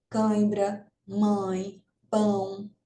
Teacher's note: O ditongo oral, ele sai pela boca, totalmente pela boca, o som das palavras, das vogais, e o ditongo nasal sai pelo nariz, por isso que é chamado de nasal